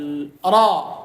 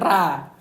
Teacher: Ra kalau dia di fathah harus dibaca tebal. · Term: ditebalkan